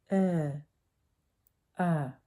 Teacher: It's in the middle of the mouth, slightly pulled back. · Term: American short U